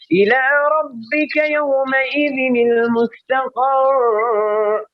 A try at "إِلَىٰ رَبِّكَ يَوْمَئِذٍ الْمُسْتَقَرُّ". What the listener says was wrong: اتنا لمبا نو ٹھہریے یہ قر ایسا نہیں کرنا إلى ربك يومئذ المستقر قر نہیں يومئذ المستقر